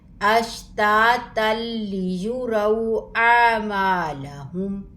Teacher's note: تنوین کے بعد لام آیا ہے، حروف یرملون میں سے ہے، تو یہاں پر ادغام ہوگا بغیر غنّے کے